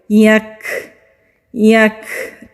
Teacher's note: کاف باریک ہے، کاف ساکن ہے۔ جب کاف ساکن ہوتا ہے وہاں پر ہمس کرتے ہیں۔ ہمس کہتے ہیں سانس کے جاری رہنے کو۔ یک، ہلکی سی آواز اس طرح اینڈ میں آئے گی تو اس کو ہمس کہتے ہیں۔